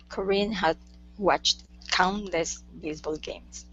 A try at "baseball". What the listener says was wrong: Okay, now that instead of baseball, it's baseball. Unvoiced S.